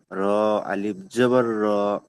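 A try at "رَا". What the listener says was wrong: হলো না। র টান হলো কই?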